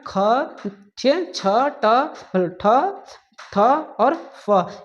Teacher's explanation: जिनको उच्चारण करने में ज़्यादा वायु की आवश्यकता पड़ती है उसको हम लोग बोलेंगे महाप्राण